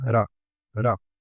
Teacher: la U la transformamos a un schwa y suena ra, ra.